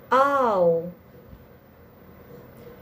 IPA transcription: aʊ